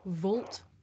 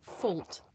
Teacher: the difference between this voiced sound, v, and its voiceless partner, f